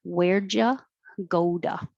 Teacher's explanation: where'd ya go da the t changes to a d